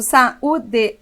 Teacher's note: o U está sozinho na sílaba tônica